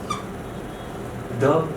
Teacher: દંત્ય હોય, ઘોષ હોય અને મહાપ્રાણ હોય તેવો વર્ણ કયો?